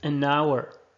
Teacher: because H is mute. It's like our, like in our house, as if there is no H.